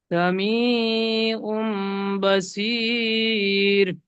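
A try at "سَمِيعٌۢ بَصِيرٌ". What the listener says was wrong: এই উমটা আরেকটু বেশি গুণনা করবেন।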